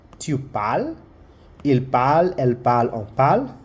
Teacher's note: So our terminaison or the endings E, ES, E, ONS, EZ, ENT. All those endings we don't say them except for nous. We only say the O and vous only the E.